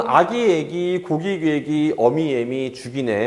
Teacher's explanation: 그런데 지금 앞에 있는 아나 어 혹은 오나 우 이 친구들이 뒤에 나오는 이모음을 의식을 해서 자기들이 먼저 모양을 바꾸고 있죠. 근데 모양을 바꾼 곳의 위치가 어디냐면 전부 다 전설모음 쪽으로, 즉 이모음 쪽으로 앞으로 이동을 한 거예요. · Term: 이모음 역행동화